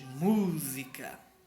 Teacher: A antepenúltima, a mais forte. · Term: sílaba mais forte